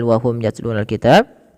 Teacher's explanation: mimnya dibaca dengan jelas karena ada huruf mim bertemu dengan huruf ya. Apabila ada huruf mim berarti kita hukumi dengan hukum mim mati. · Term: izhar syafawi